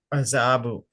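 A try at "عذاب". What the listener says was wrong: how do you pronounce the dal? You know, it's common, right? This is for a lot of people, it is azabu. No, it's not azabu. It's adabun, right? Adabun.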